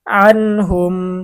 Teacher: ইজহার, নুন সাকিন ও তানভিনের পরে ইজহারের ৬ হরফের কোনো একটি হরফ আসিলে তখন ওই নুন সাকিন বা তানভিনকে গুন্নাহ ছাড়া স্পষ্ট করিয়া পড়িতে হয়। এখানে নুন সাকিনের পরে হা আসছে, হা হচ্ছে ইজার হরফ, এজন্য গুন্না ছাড়া স্পষ্ট পড়তে হবে।